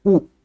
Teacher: छोटे ऊ को बोलने में होठ बिल्कुल गोल से हो जाते हैं, ऊ। अच्छा, और सब बड़े ऊ को भी बोलकर देख लो तो गोल हो जाते हैं। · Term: वृत्ताकार